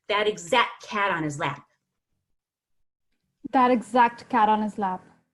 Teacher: when you have that many consonants, you don't have to say the T. Is exact cat.